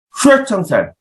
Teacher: 입모양은 오의 상태를 만들어낸 다음에 발음을 이라는 소리를 내는 겁니다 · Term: 단모음 왜